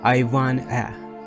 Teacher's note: we are going to remove the t sound